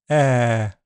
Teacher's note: Air is a long front vowel sound made with the jaw open mid and relaxed lips. Air. It's generally a bit more open than the short e sound, but they are close enough to be treated as a long short pair. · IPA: /ɛː/